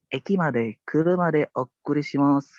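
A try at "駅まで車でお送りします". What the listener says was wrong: Oh, okurisimasu. O-nya ada 2 ya. Oh, okurisimasu.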